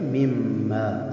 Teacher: من ما یہ بھی ادغام بالغنہ ہے، ٹھیک ہے؟ تو نون ساکن تھا، نون ساکن کے بعد میم آیا حروف ادغام میں سے، تو نون ساکن اور میم متحرک دونوں مل کے ایک حرف بنا، تو اس کو ہم پڑھتے ہیں مما، اصل میں یہ من ما ہے۔